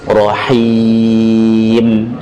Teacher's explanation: Mad arid lis sukun. Akhirnya dengan mim. Mim dibaca dengan tanpa gunnah.